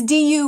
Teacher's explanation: It's du with the rising tone